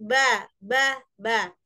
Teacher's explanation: Ba di bibir, bibir bagian kering, ba.